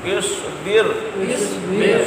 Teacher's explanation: صاد مستعلیہ ہے اس کو بھی پر یعنی موٹا